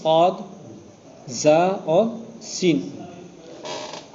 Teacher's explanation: نو کی زبان اور ثنایا سفلا کا کنارہ مع اتصال ثنایا علیا کے، اس سے 3 حروف صاد، زا اور سین، یہ 3 نکل رہے ہیں.